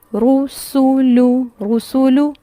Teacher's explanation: پیش میں ہونٹ اچھے سے گول ہوں گے تینوں حروف کو پڑھتے ہوئے، رسولو رسولو، اور پڑھتے ہوئے جو فوکس ہوگا وہ ہونٹوں کی گولائی پہ ہوگا.